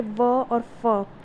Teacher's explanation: ठीक है, व तथा फ का उच्चारण करते समय नीचे का ओष्ठ ऊपर वाले दांतों को अंतःस्पर्श करता है, अतः इन्हें दंतोष्ठ कंठ कहा जाता है।